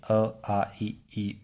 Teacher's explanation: वे स्वर वर्ण जिनके उच्चारण में होठों का आकार वृत्त के समान नहीं दिखाई देता है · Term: अवृत्ताकार स्वर